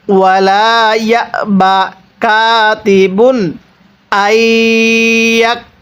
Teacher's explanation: তানবিনের পরে হামজাটি ইজহারে হরফ, এই জন্য তানবিনটিকে স্পষ্ট করে পড়ছি।